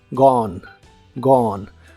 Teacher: se pronuncia sin la e del final y la o es como una O profunda